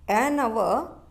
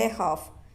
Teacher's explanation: in hour we used an because H is silent, but in the second part, a half, H is pronounced as consonant. So we have to use a.